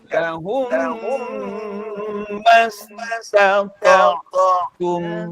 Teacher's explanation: Lahum, lamakan sikit iaitu dua harakat. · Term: idgham syafawi